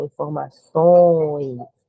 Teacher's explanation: Nasal por conta do tio aí, que ele serve para indicar a nasalização justamente. Decrescente, saindo do O para o E, o som do O vai ser mais forte